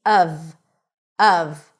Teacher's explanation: it's pronounced when emphasized uhv, with a cup sound and a V sound. Even though it's spelled with an F, it's a V.